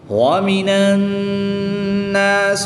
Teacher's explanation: نون مشدد میں ہمیشہ غنہ ہوتا ہے، یہاں پر غنہ کر کے پڑھیں گے